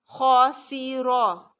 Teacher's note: خاسیرا، را پھر خا بھی موٹا اور را بھی موٹا. خاسیرا.